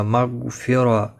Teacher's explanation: غائن مستعلیہ ہے، پر پڑھا جائے گا، ہلانا نہیں ہے اس کو، اگر آپ نے ہلایا تو یہ اس پر قلقلہ ہوگا